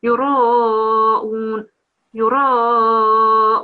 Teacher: we have to have a round mouth on the ra because the ra is carrying a fatha